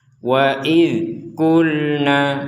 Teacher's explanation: lam bertanda sukun sama dengan dzal, tidak ada pantulan juga. Jadi kalau memang huruf itu tidak dipantulkan, tidak boleh dipantulkan, maka kita tidak boleh memantulkan.